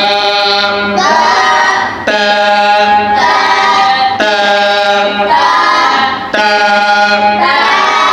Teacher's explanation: জিহ্বার আগা সামনে উপরে দুই দাঁতের গোড়ার সঙ্গে লাগে।